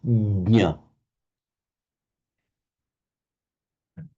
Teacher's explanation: So you start the j, but you don't finish it. You put your tongue as if you're going to say j, just start it, but then go straight onto the nya. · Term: jna